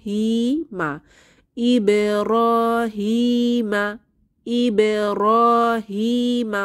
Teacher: র আলিফ সগির আছে র তে এক আলিফ টেনে পড়বো হি এখানে ইয়ামা এক আলিফ টেনে পড়বো